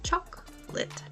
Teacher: second part lit is quick and almost Blends together imagine you're saying it in only two syllables chalk lit practicing